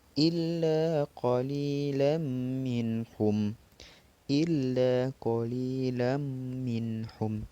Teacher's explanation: Qalilan minhum adalah yang tanwin bertemu mim, itu merupakan idgham bi gunnah.